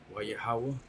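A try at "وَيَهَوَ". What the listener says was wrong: close, a little too fast. Waya Hayawa. Hayawa.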